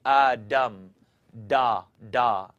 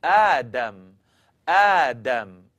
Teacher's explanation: Make the dal into a D, and your tongue's going to kind of curl up and hit the top of your mouth.